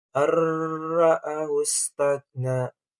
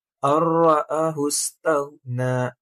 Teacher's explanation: Dalam idgham bila gunah, nun sukun atau tanwin tidak dibaca lagi, melainkan langsung melebur ke huruf sesudahnya, yaitu lam atau ra, tanpa dengungan dan tanpa tekanan suara hidung. Jadi ini ketika membaca idgham bila gunah itu tuh tidak perlu ada dengungan dua harakat seperti membaca idgham bigunah.